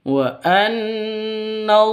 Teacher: Maka dibaca gunnah musyaddadah, dengung 2 ketukan.